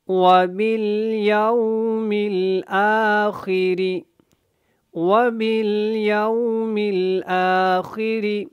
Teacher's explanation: باقی آپ نے را کو جو ہے وہ باریک پڑھنا ہے، اور یو کو یو کی طرح نہیں پڑھنا۔